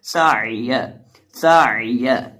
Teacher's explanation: یہ سین جو ہے یہ سیٹی والا حرف ہے، اور عین کو ہم حلق کے درمیان سے ادا کریں گے